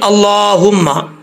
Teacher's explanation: ये जो हा है इसका साउंड, इसकी जो आवाज़ निकलती है वो सीने से ही निकलती है